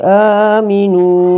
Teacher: Berikutnya aminu, ini lagi ada mattabi di sini, mattabi ya, karena nun dhamma bertemu dengan waw sukun, maka cara membacanya juga adalah dua harakat